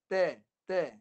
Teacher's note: Huruf ta keluar kat mulut. Ta. Jangan masuk hidung.